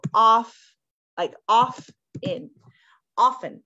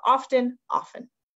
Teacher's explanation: you can also just say it without the T